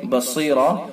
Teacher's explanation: بصیرہ صاد پر پڑھا جائے گا اور را بھی پر پڑھا جائے گا